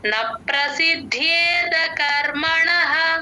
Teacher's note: సిద్ధ్యే తర్వాత ఉన్న ద కి మహాప్రాణం లేదు గమనించండి